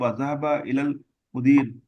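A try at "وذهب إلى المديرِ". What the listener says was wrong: ذهب الى المدير، اعراب پڑھنا ہے.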